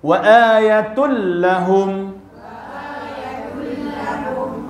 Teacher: Begitu tak ada baca yatun, tak ada dengung langsung. Masuk sempurna. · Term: idgham